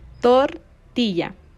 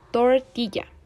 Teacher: la r de tortilla es una vibrante múltiple